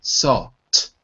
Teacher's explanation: your tongue floats in the air, sol, and then taps for the T, salt. Okay?